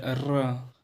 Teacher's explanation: मसूड़े के पास जीभ जा रही है और झटका कर रही है, तो एक प्रकार का कंपन होता है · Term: प्रकंपित व्यंजन